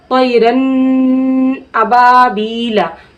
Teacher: ठीक है, अगर हम इस तरीके से पढ़ दिए तैरन अबाबीला तो गलत हो गया, क्योंकि यहाँ पे क्या हो रहा है, गुन्ना हो रहा है। नून की अगर आवाज़ को नाक में रोके रख रहे हैं थोड़ी देर तो इसमें क्या हो जाता है, गुन्ना हो जाता है